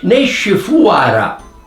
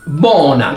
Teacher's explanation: La O tonica nel palermitano è UA